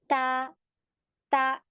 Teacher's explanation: अगर इसमें हमस पाया जाता है एयर फ्लो महसूस होता है जब हम इसे पढ़ते हैं